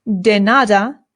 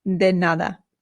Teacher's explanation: to make the softer D bring your tongue up right behind your teeth almost in between them